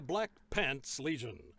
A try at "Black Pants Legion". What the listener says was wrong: you're putting a bit too much emphasis on the word pants.